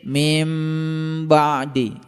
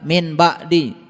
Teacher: dibacanya mim, didengung sedikit mim ba'di. Beda dengan orang min ba'di, beda. · Ketika nun mati ketemu dengan ba, dibacanya mim, didengung sedikit